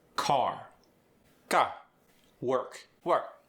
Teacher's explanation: The R is usually light or neutral. It's not exaggerated or rolled.